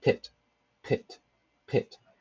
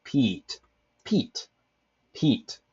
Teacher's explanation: Pit has a very relaxed I sound. You see, it's not as forced as the E in peat. That's essentially what lax and tense vowels mean in this context.